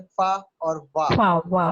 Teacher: फा जब बोलेंगे तो नीचे वाला होंठ दांतों से टकराएगा · जब वाह बोलेंगे तो नीचे वाला होंठ दांतों से टकराएगा। तो लिप्स और डेंटल यानी दांतों और होंठों के मिलाप से बनते हैं लिबियोडेंटल।